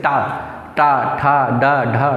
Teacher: इसको हम बोलेंगे मूर्धा से बोला जा रहा है